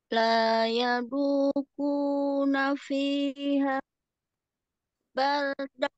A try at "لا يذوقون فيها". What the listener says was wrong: Fihanya kurang menekan. La yadhuquna fiha. Nah, agak penekanan.